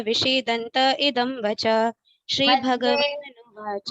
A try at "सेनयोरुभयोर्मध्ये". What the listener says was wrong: मध्ये मध्य नहीं है, मध्ये सेनयोरुभयोर्मध्ये विषीदन्तम् इदं वच।